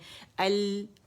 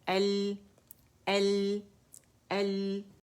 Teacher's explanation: تو اس میں آواز بجائے ادھر سے نکلنے کے ادھر، اسی وجہ سے اس میں انحراف ہے کہ آواز یہاں سائڈوں سے ہماری نکلے گی